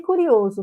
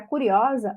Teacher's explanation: Só que de curioso para curiosa, observe que há alternância vocálica, né? Nós temos a mudança do O fechado para o O aberto.